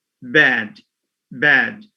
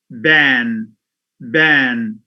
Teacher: Now the first is oral. The vowel is oral. The second, it's nasalized.